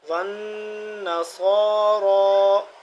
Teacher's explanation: صاد بھی موٹا کھڑا زبر، را بھی موٹا اور کھڑا زبر ایک الف کے برابر دونوں لمبے ہوں گے